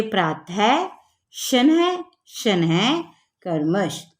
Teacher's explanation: जैसे ये दो बिंदियां हैं, आहा लगा है। विसर्ग का उच्चारण ह के समान होता है